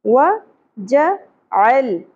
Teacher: लाम साकिन पे क़लक़ला नहीं होना चाहिए